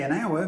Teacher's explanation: we say an hour because the H of hour is silent